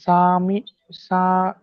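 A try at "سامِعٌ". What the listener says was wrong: সা টান হবে না, মিমটা টান হবে, সামি উম।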